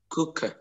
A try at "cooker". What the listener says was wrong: cu cu thôi đừng đọc là cúc nhá, đọc là cu thôi đừng đọc là cúc, cu cu cu cúc, cooker, đấy, cooker,